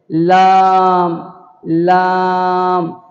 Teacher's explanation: کنارہ زبان مسوڑھے سے مل کر لام ادا ہوتا ہے،